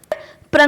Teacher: र कंपित होता है कैसे एक कंपन होता है